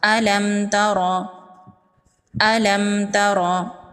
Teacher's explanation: میم کو ظاہر کر کے پڑھیں گے، میم پر غنہ نہیں کریں گے۔ یہاں پر میم ساکن کے بعد حرف تا ہے، یہاں پر نہ تو با ہے اور نہ ہی میم ہے، یہاں پر میم کا اظہار ہوگا۔ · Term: اظہار شفوی